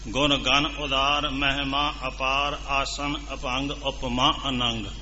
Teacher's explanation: ਵਿਚਾਲੇ ਥੋੜਾ ਜਿਹਾ ਵਜਨ ਦੇ ਕੇ ਉਸ ਨੂੰ ਬੋਲਣਾ, ਉਸ ਨੂੰ ਮੱਧ ਭਾਰ ਛੰਦ ਕਹਿੰਦੇ ਆ। ਇਸ ਤਰ੍ਹਾਂ ਇਸ ਨੂੰ ਬੋਲਣਾ ਹੈ ਜਦੋਂ ਆਪਾਂ ਤੇਜ਼ੀ ਦੇ ਨਾਲ ਪੜ੍ਹਨਾ।